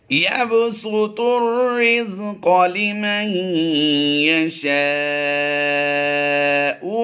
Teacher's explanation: اللہ یبسط تو کو ہم نے اس را سے ملانا ہے. یہ الف اور لام دونوں سائلنٹ رہیں گے